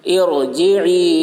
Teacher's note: را ساکن سے پہلے زیر عارضی ہے، اس لیے را کو پر پڑھیں گے۔ ارجعی، جیم کے نیچے زیر ہے، زیر کو جلدی پڑھیں، تھوڑا بھی نہ کھینچیں، معروف پڑھیں، مجہول آواز سے بچیں۔